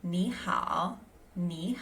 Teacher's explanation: when ni and hao go together, there's a slight pronunciation change. So ni becomes second tone and hao becomes third.